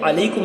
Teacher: اور عین کو حلق سے ہم نکالنے کی کوشش کریں گے